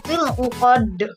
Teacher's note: Kenapa dal itu dipantulkan? Karena diwakofkan. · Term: qalqalah